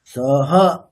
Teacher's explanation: হটা হ এর অকারটা উদাত। তাহলে ওটাকে সামনের দিকে বলতে হবে।